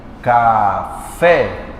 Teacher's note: O fé é mais forte, chamamos de oxítona.